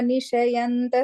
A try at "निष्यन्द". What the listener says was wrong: Small correction, first line, Nishyanda, it's a half-ish, Nishyanda.